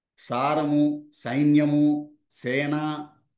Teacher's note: గాలి పళ్ళ ముందే పళ్ళలో నుంచి వస్తుంది బయటకి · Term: దాంత్యం